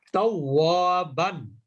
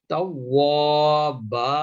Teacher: যদি দুই জবর থাকে তাহলে সেখানে থেমে যাওয়ার সময় এক আলিফ মাদ করে থেমে যেতে হয়। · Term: মাদ্দে আওয়াজ